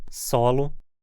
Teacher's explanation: Na pronúncia laminar, o S soa um pouco menos chiado, pois a superfície de contato da língua com a região atrás dos dentes é maior.